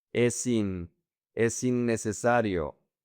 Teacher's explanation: The S connects to the I.